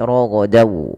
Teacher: Kalau huruf setelahnya waw, maka masukkan tanwinnya ke waw dan ditahan dan dibunyikan dengan huruf waw. Suara nunnya hilang. Raghadan menjadi ragadaw. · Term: idgham bi gunnah